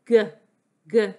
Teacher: It's a buzzy sound. G, g. You can feel your voice buzz when you say it.